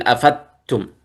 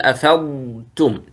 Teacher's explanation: لا تقول أفضتم من عرفات، لأن هذا الضاد وليس دال. لا تقول أفدتم، قل أفضتم، توضح الضاد.